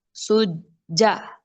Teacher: दो दफा जिम की साउंड आ रही है